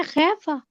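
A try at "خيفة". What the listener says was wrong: نہ تقلیل نہ کریں، امالہ کریں. ہاں، امالہ حمزہ.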